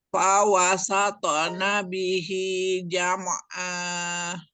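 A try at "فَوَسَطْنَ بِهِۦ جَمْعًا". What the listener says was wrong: Jam'a. Nah, mim sukunnya alirkan, nggak boleh dipantulkan. Jam'a, tidak jam'a, tapi jam'a.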